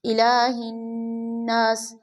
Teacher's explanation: یہاں الہ لام کے اوپر کھڑا زبر ہے، اس کو کھینچیں گے، اور نون کے آگے الف ہے تو ان دونوں کو برابر کھینچتے ہیں، کھڑا زبر کو الف مدہ کے برابر کھینچتے ہیں، اور یہ الف مدہ ہے۔